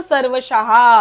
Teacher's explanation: श च्या नंतरचा विसर्ग पूर्ण बोलायचा आहे